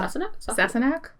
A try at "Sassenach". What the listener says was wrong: You put the wrong emphasis